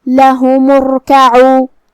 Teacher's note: را کا حکم ہے تفخیم کیونکہ یہاں میم پہ پیش ہے تو ہم را کو بھاری آواز میں پڑھیں گے